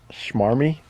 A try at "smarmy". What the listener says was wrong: No, it's S. It's SM.